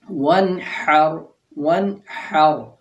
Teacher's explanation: جیسے ہم پڑھتے ہیں ون ہر، ون ہر، ہا جو ہے یہ تھوڑی سی آواز اندر ٹکرائی ہے حلق کے اندر